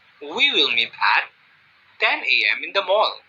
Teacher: In this example, I pause slightly after I say the word at